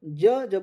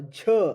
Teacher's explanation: यह जो है अल्पप्राण है और झ यह जो है अधिक लग रहा है समय तो यह महाप्राण है